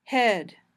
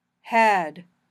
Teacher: It should be a little higher in your mouth for E than for a